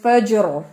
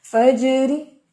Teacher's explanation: فجری اور فجر، فجر یہاں پر جب آپ ایسے ساکن کر کے کریں گے تو وہ را موٹا ہے، لیکن پڑھیں گے فجری تو را باریک ہے